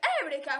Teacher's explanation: eureka con l'accento sulla seconda e perché io sono greco e in greco si dice eureka con l'accento sulla prima